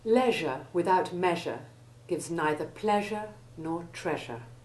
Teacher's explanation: the EI combination having the short E1 sound and rhyming with measure, pleasure and treasure. Be sure to avoid the American pronunciation which rhymes it with seizure.